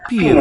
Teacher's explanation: the nasalization, the swallowed M of the I form of the verb